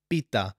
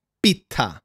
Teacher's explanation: most people cannot pronounce double consonants and therefore they will ask for a pita